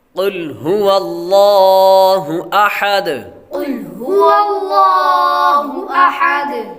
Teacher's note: احد، یہاں پر حا باریک پڑھیں گے اور دال حروف قلقلہ میں سے ہے۔